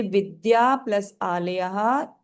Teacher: विद्या के लास्ट में आ बड़े आ की आवाज आ रही है और आलय के शुरू में बड़े आ की आवाज आ रही है